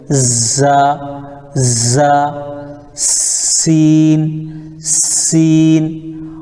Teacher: زا اور سین سیٹی بھی نکلے گا، اب یہ باریک رہے گی